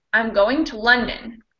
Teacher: the verb am but we stress london a little more so our content words are going in london but london gets a little more stressed